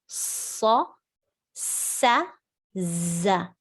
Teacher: tip of the tongue with the lower incisors, you pronounce sad, sin, za. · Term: as-safir